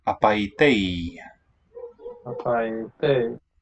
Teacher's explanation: It's a kind of a mixture between old pronunciation and modern. The I diphthong is what it was anciently, but in modern Greek, fused into a short vowel.